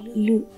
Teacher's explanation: जब हम इस स्वर वर्ण लू का उच्चारण करते हैं तब हमारी जीवा उच्चारण स्थान यानी कि दंत स्थान से दूर रहनी चाहिए